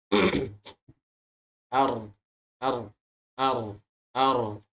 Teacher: makhraj ro adalah dari ujung lidah berikut gigi seri yang sejajar ini dari ujung lidah tadi pertama ujung lidah bertemu dengan Gigi